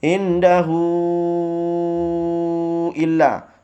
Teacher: hu-nya dipanjangkan 5 harokat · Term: mad silah tawilah